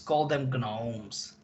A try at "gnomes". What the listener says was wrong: Gnomes. Okay, we don't pronounce the G, but yeah.